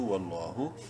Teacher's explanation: واو لام زبر ول، لام کھڑی زبر لا، لفظ الوا سے پہلے زبر ہے، لام کو بولڈ، اور کھڑی زبر کی وجہ سے ایک الف کے برابر لمبا کریں گے